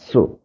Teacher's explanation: sin depan su, baca dengan hamas dan safir su